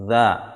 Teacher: Ujung lidah bertemu ujung gigi seri atas. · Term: huruf dha